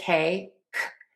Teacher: Tip of the tongue is low, back of the tongue is high up.